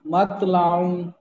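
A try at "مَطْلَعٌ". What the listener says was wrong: মাত, ত, ত মোটা করে, মাতলাউন,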